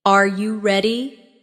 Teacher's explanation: when a native speaker asks a yes or no question like, Are you ready? the pitch of their voice goes up at the end. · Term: intonation